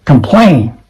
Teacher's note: The stress falls on the second syllable.